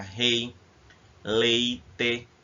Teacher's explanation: tanto no leite quanto no rei o som sai todo pela boca